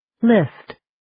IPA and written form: lɪst (List)